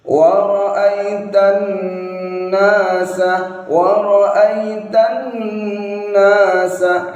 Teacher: ada dengungnya kurang lebih 1 alif atau 2 harokat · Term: gunnah musyaddadah